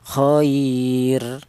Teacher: qasar pendek yaitu satu alif atau dua harakat atau dua ketukan